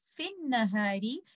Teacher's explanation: because you are choosing to join fi with an nahari, you will drop Hamzatul Wasl and you will say fin nahari and you will not give any vowel to Hamzatul Wasl.